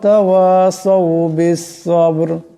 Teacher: এখানে বা সাকিন আছে, বা কলকলা হরফ, আওয়াজটি দিয়ে টক্কর খাবে